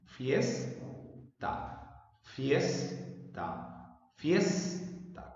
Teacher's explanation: La sílaba fies se pronuncia con mayor intensidad. Quiere decir que el acento se encuentra en esa sílaba.